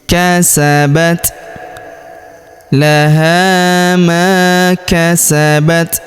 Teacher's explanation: Huruf ta berharakat sukun. Kita berikan hembusan tipis.